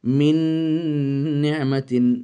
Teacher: নুন সাকিনের পরে নুন এসেছে, ইদগাম তাম পরিপূর্ণ গুণনা সহকারে ইদগাম হবে।